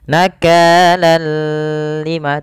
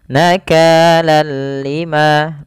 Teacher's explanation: hanya idgam saja tanpa disertai dengan gunah idgamnya apa idgamnya adalah kita memasukkan tanwin ke huruf lam Seraya kita ee hilangkan suara nunnya dan kita ganti dengan huruf lam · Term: Idgham bilaaghunnah